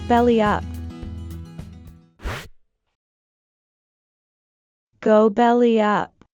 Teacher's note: When we link the words together in fast speech, we'd add a little y sound in between belly and up for a smooth flow.